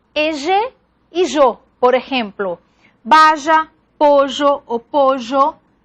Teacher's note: el yeísmo es caracterizado por la pérdida de diferencia entre los fonemas pertenecientes a la L lateral a favor de una pronunciación central, fricativo fricada del fonema, como si fuera Y.